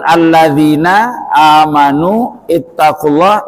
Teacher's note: alladzina amanu ittaqulah itu disebut Mad Thobi'i panjangnya dua ketuk